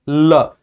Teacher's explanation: जिभ्या ऊपर उठी दांतों को छू रही है। दांतों को छूने के साथ-साथ मुंह के अंदर जो बनने वाली हवा है वो अगल-बगल से बाहर आती है। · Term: पाश्विक